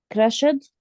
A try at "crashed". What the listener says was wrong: Crashed. The E sound is not pronounced. برجع بذكر جايز أي فعل بينتهي بتي أو دي فقط بذكر الإي ساوند، وما تبقى من النهايات جايز ما بذكر الإي ساوند. So crashed.